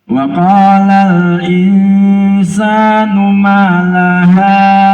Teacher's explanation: Kalau ikhfa karena ketemu huruf sin di belakangnya, maka ujung lidah niku mboten nempel.